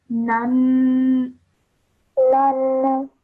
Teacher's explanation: fathaten should be pronounced for 2 seconds with a nasal sound